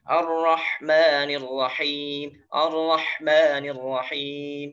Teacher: ketika pengucapan ar-rah, nah itu jangan terlalu berlebihan karena di situ ada sifat nanti hamas ya, hamasnya jangan terlalu berlebihan. Ar-rah, nah biasa aja ar-rahmanir rahim, ar-rahmanir rahim, seperti itu ya.